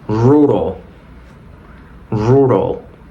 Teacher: la primera r es fuerte podemos decir que es como r pero la siguiente es como una r en español